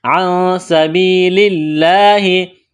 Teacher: سین میں سیٹھی کی آواز پیدا کریں گے، سین کو باریک کرنا ہے